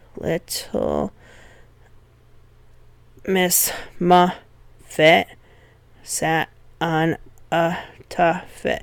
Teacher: So it's a pattern, stressed, unstressed, unstressed, stressed, unstressed, stressed, unstressed, unstressed.